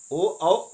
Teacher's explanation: ओ औ आ का यह उच्चारण होता है कंठ और ओष्ठ से